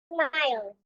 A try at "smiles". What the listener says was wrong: I want to hear the S at the end. Smiles.